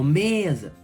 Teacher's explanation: O me é forte. Então é uma paroxítona.